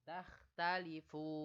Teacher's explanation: Ada huruf nun yang hidup tapi dibaca mati. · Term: mad arid li sukun